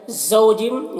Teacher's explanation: اس واولین کو نرم آواز کے ساتھ جلد پڑھنا ہے، اور جم یہاں پر ادغام ناقص ہوگا، غنہ کے ساتھ میں پڑھیں گے۔